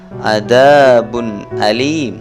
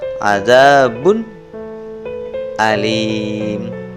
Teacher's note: membaca huruf nun mati atau tanwin tanpa suara sengau atau dengung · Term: idhar